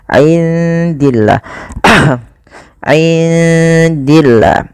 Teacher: indi di sini ada bacaan ikhfa, maka suara nunnya samarkan kepada huruf dal.